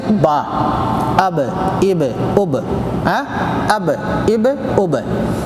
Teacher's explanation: دونوں ہونٹ کی تری جگہ ملا کے، تری یعنی بھیگی والی، دونوں ہونٹ کی بھیگی جگہ سے با